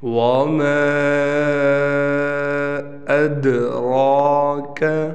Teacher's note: یہاں ہم قلقلہ کریں گے، حروف قلقلہ میں سے دال آ گیا اور دال ساکن ہے